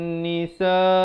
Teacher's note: Nisa dibaca 4 atau 5 harakat.